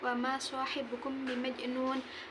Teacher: mim sukun bertemu dengan huruf ba, cara bacanya mim samar sambil berdengung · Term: ikhfa syafawi